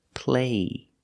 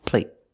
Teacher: The stop T makes the vowel shorter.